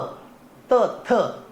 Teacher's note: आहे कारण दंत आणि ओ तुम्हाला उच्चारानुसार कळत बघा दंत दात तचा उच्चार करताना काय होत दात लागतो जिभेला दात लागतात